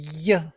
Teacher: i press tongue to the palate so much that it becomes like a consonant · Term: ye sound